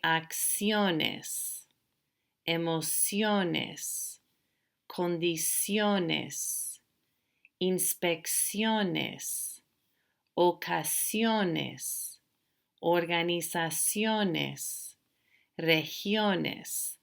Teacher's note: the stress will naturally be on the second to the last syllable